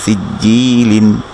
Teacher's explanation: কাসরার বামে ইয়া সাকিন আছে, তাই এক আলিফ মাদ হবে